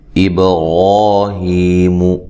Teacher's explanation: با کو ہلا کر پڑھنا ہے، با قلقلہ ہے، حروف قلقلہ میں سے ہے۔